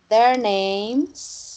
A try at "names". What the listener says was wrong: É só que você tá, não tá pegando plural, ó. Porque aqui, como é que é a pronúncia? Som dizer. Names, né? Como som dizer, ó. Names are. Names are.